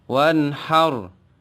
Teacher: wanhar harakatnya sukun Tapi sebelumnya ada harakat Fatah itu pun sama contoh dari ro yang dibaca tafkhim atau tebal